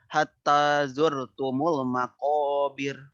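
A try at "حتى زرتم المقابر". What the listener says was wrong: Bagus. Nah, itu. Sekali lagi.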